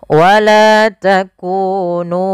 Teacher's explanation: harus dibaca dengan jelas suara mimnya dan tidak boleh ditahan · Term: izhar syafawi